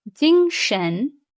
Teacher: First tone, 精, high, steady. And second tone, 神, is a rising tone.